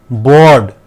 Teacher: यहाँ पर र साउंड नहीं है, बर्ड आपको आ खींचना है